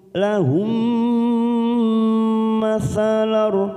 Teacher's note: mim sukun bertemu mim, idgham mimi, kita tekan 3 ketuk